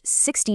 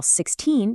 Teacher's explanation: In American English, 60 takes the stress on the very first syllable, while 16 takes it on the second. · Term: word stress